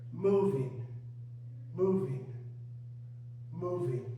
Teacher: The stress is on the first syllable, like syllables.